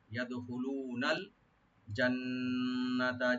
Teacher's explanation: লু একালে টানবেন, আর নুন লামের সাথে মিশবে